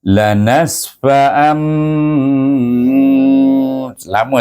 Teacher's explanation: dengung dua harakat tengok saya baca las lama saya bunyi tu nak Tunjukkan bibir rapat dan berdengung dekat pangkal batang hidung itu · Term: iqlab